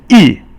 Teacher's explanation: the fourth tone is yi, which is falling, and kind of do it with your gut, yi. And then qingsheng is just no tone there.